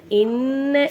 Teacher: நூனுக்கு மேல சத்த இருக்கனால நல்ல அழுத்தி வச்சிருக்கணும்